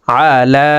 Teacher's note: লামের উপরে খারা জবর আছে তাই এই লামকে একালিপ টেনে পড়ব।